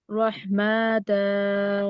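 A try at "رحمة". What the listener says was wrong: না রহমা, গোলতা হচ্ছে ওয়াকফের সময় হা হয়ে যায়, ওইটার মধ্যে টান হবে না।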